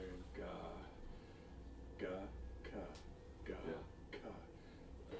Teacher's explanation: The ka and the ga hit the palate in exactly the same place in the back. The difference between ka and ga is unvoiced and ga is voiced.